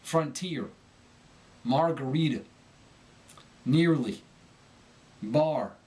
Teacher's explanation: When R appears at the end of a word, the modern Southern speaker overpronounces it and makes it nasal. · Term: the hard R, hard R